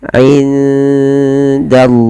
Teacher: lafal Allah tetap ditebalkan yaitu lam tafkhim